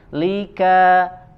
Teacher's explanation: huruf ka mengeluarkan angin sedikit ya huruf lam dipantulkan